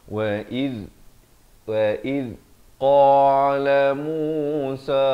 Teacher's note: Iz hujung lidah tu keluar. Iz hujung lidah keluar di antara 2 gigi.